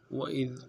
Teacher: وَإِذْ میں واو کو نرم سے ادا کرنا ہے، حمزہ کو ذال کے ساتھ ملانا ہے، ذال کو انتہائی باریک ادا کرنا ہے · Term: باریک حرف ذال